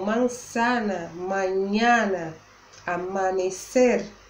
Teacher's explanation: A letra A em espanhol não é nasalizada, como por exemplo em português na palavra manhã. A gente diz em espanhol o A bem aberto